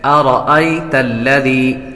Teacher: یا ساکن سے پہلے زبر ہو تو یا لین ہوتی ہے، اس لیے اس کو لمبا نہیں کریں گے · را پر زبر ہو تو را کو پر پڑھتے ہیں